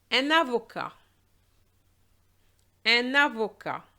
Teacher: We're going to link the un with the avocat, and that's going to give us un avocat.